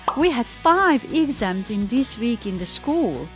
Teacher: we also stress the numbers of the sentences